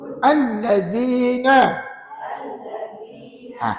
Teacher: Zal tu berbaris bawah kan maka tak melantunlah dia tapi hakikatnya huruf Zal ni Huruf yang nipis tuan-tuan kena pastikan